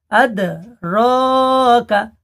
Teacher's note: ওয়ামা আদরাকা, আদ এই দালটা কলকলা, আদরাকা রটা একালিপ টান হবে, খারা জাবারকে একালিপ টান দিয়ে পড়তে হয়